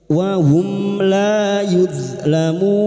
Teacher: Mim sukun dibaca dengan jelas tanpa bersenandung. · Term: izhar syafawi